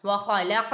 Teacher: قاف ساکن ہے، یہاں پر حروف قلقلہ میں سے ادھر قلقلہ خوب ظاہر ہوگا